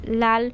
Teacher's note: ধ্বনি যে ব্যঞ্জন ধ্বনি উচ্চারণের সময় জীভের ঢকা দন্তমূল স্পর্শ করে ফুসফুস থেকে বাতাস জীভের দুই পাশ দিয়ে বেরিয়ে যায় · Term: পার্শ্ববিক ব্যঞ্জন